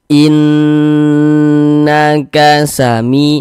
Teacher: Jadi bagian inn-nya itu suaranya itu kita tahan, kita panjangkan sejenak. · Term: ghunah, gunnah musyaddadah